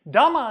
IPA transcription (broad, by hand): dama